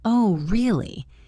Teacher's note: But if I say, "Oh, really?" with a high pitch at the end, it means I am surprised or I don't believe you. If I say it with a low pitch, oh really, it might mean I am disappointed or bored.